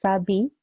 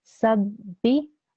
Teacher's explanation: So instead of saying sabi, I'm saying sabbi. I'm making sure that I glue the seen sound with the ba sound. Sabbi, that's why you hear the b sound. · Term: tashdid